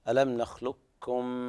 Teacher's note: هذا إدغام متماثلين صغير كامل بغنة